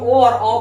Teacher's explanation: ओ और औ का उच्चारण कंठ प्लस ओठ से